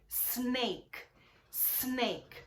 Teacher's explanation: Começa com S. Não tem essa vogalzinha E, que a gente chama de vogal epentética